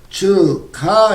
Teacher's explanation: 기역이라는 이 음운이 히읗이라는 음운을 만나서 키읔이라는 음운으로 소리가 나는 현상을 말합니다.